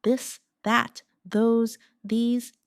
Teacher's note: let your tongue touch your teeth lightly but use your voice